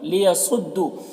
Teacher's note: واو میں الف مدہ ہے، ایک الف کے برابر کھینچیں گے۔ لیصدوا، صاد حروف مستعلیہ میں سے پر پڑھیں گے